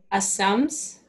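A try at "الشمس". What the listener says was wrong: Not sa, this is sh, sh, sh, ash. Ash. This is ash, ashams. Ashams.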